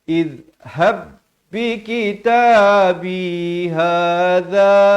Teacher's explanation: Ha dan za masing-masing dua harakat